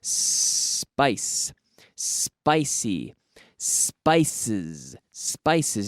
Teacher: the S sound which is not vocalized it's not voiced meaning there's no action in the vocal chords